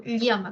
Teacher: con esa lateral palatal que no tienen los yeistas